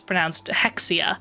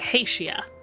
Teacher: I assumed it was just like an English word h e x i a. That x is pronounced more like an s, like an sh sound.